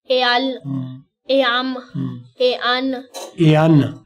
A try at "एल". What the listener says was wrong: एआन, मिला के बोलना है, एआन भी ठीक बोला है, लेकिन मिला के बोलना है,